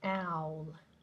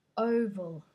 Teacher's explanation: remember with owl, it's like an A, so your mouth has to be open. It's different to oval, which is quite closed.